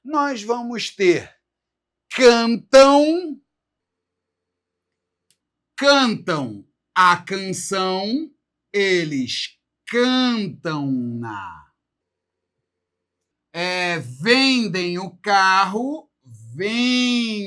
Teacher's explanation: Essa ideia nasal invade o pronome e transforma esse pronome em uma outra coisa. Então, além do lá, lás, lo, nós vamos ter as formas na, nas, no, nos. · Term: Terminação nasal